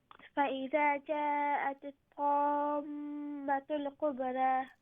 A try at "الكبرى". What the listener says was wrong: No, kubara. Ra has a standing fatha, full mouth. Kubara.